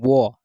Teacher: जैसे वो, तो देख रहे हो ऊपर वाला ओष्ट नीचे वाले ओष्ट का सट रहा है, उसके बाद दांत भी सट रहा है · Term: दंतोष्ट